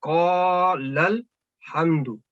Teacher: لام فتح کے ساتھ سیدھا اس لام سکون کی علامت کے ساتھ جا کے مل گیا. اس لام نے اس ساکن لام کے ساتھ جا کے ملنا ہے.